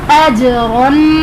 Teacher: अजरन, जीम हरूफ कलकला में से साकिन है तो इसलिए यहाँ पर कलकला खूब ज़ाहिर करेंगे, और रॉ पर 2 ज़बर की तनवीन है इसलिए रॉ को पुर पढ़ेंगे